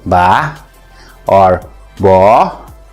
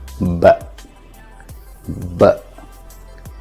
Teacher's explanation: replace the after sound, the tail sound, with a schwa and turn it from ba to b. B. Can you hear it?